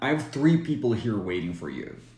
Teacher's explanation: when we're not emphasizing it we can drop the H sound and the a sound will sound like a schwa